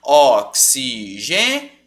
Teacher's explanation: Você está dando uma força para ele a ponto do O não tampar o som dele, porque é o que acontece na palavra, ó. O som do O tampa o som do I. Oxigênio. Você mal pronuncia o I.